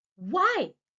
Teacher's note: when I said व्हाई, I my pitch was high, it was rising